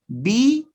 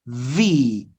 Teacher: a b c and then v b v notice the difference one is with the lips and the other is with the teeth on the lip